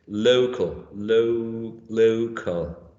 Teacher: The primary stress is in the first syllable